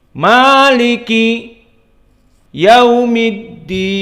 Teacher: Maliki dibaca dua harakah, dan maliki di sini muraqqaqah semuanya sehingga dia datar flat